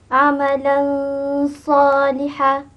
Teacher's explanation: Didengungkan selama 2 harakat ya. tanpa ada bunyi sabdu. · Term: Ikhfa Hakiki